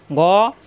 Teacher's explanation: কণ্ঠনালীর শেষ অংশ থেকে গ মোটা হবে